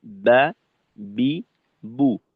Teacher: তো বা এর উচ্চারণে আমরা বাংলা ব এর মত উপরের ঠোটকে নিচের ঠোটের সঙ্গে স্বাভাবিক অবস্থায় লাগাইয়ে চাপ দিয়ে তারপর আমরা উচ্চারণ করব বা বি বু বা এখানে আমরা বলতে পারি দুই ঠোটের ভেজা জায়গা থেকে বা উচ্চারিত হয় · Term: বায়ের উচ্চারণ